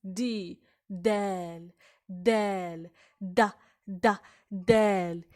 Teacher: the tip of the tongue pressed against the top of the mouth, right behind the front tooth, then slightly pushing air, separating the tongue and the upper mouth.